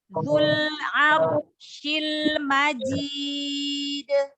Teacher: Roknya tebal karena rok sukun sebelumnya fathah. Maka roknya dibaca tebal.